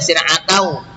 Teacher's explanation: Kemudian yang ketujuh ini syir'atau, tulisannya syir'atan dibaca syir'atau, idgham bi gunnah, ini tanwin fathahnya ya, tanwin fathah dimasukkan dengan dengung